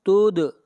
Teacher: دال کے اوپر قلقلہ کریں گے، آواز کو ہلائیں گے